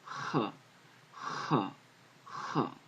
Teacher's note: In modern Hebrew, Chet is pronounced Ch, Ch, Ch. It's sort of like you're clearing your throat.